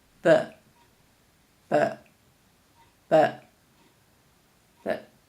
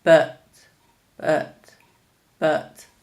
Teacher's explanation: but is replaced by the schwa sound when it's weak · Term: weak form